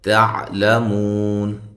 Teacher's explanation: تا کو باریک عین کو واضح نکالنا ہے، لام کو بھی باریک پڑھنا ہے. مو و مدہ ہے تو وقف کی صورت میں مد کر سکتے ہیں.